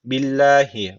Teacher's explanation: burada Allah lafzı ince okunacak Çünkü öncesindeki harfin harekesi altta yani öncesindeki harf alttan bağlanıyor